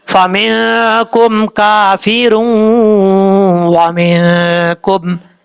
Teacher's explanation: نون تنوین کا ادغام ہوگا، ایک الف کی مقدار غنہ کریں گے